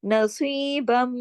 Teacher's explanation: نصیبم, اب یہ جو با 2 زبر بن کی تنوین تھی یا آگے تشدید کی وجہ سے ختم ہو گئی, ادغام ہو گیا. با جو ہے وہ میم کے ساتھ مل کے پڑھے جائے گا کیونکہ میم پر تشدید ہے, 2 میم ہے, بڑا غنہ ہوگا.